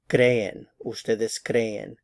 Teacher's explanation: Two syllables. Cre and en. Stress on the cre.